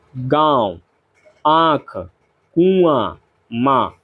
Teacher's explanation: मुंह से अधिक तथा नाक से बहुत कम सांस निकलती है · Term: अनुनासिक